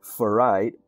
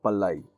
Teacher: Hawaiian doesn't have an F sound and that it doesn't have an R sound. So whenever the words borrowed from English into Hawaiian, they are adapted into the phonology.